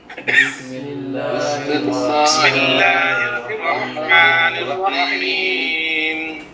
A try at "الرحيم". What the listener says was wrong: ہاں رحیم میں ہا پہ شد نہیں ہے نا، تو رحیم نہیں، رحیم۔ قل یا ایہا الکافرون۔ اب یا پہ جو مد ہے نا، قل یا ایہا، یہ مد لازمی مد نہیں ہے، چھوٹی لکھی ہوتی ہے نا، ایک تو